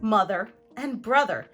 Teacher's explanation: we also see the letter O be pronounced as a schwa in the stressed syllable of multisyllabic words